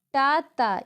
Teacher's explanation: अल्प प्राण व्यंजन जिनमें कम वायु का प्रयोग होता है